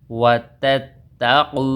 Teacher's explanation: تا تا زبر تت، تا زبر تا، قاف وو پیش قو، وو مدہ ایک الف کے برابر لمبا ہوگا. وتتقوا، وو زبر وا، یا حمزہ زبر یا جھٹکا دے کر پڑھیں گے.